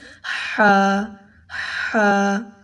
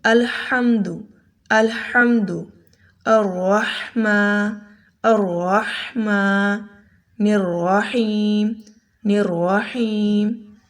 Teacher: آپ کا جو گلا ہے، تھروٹ، آپ کا حلق، اس میں ہا درمیانی حصے سے نکلتا ہے، ہا ادا ہوتا ہے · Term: حلوے والی ہا